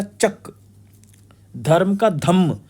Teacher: संयुक्त व्यंजन समाप्त हो जा रहे हैं और द्वितीयकरण की प्रवृत्ति हो रही है। द्वितीयकरण मतलब दो चीजें आएंगी।